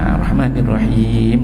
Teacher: So Ar-Rahman ni kena senyum sikit. Ni Rahim, ra tu tebal, dia ada getaran sikit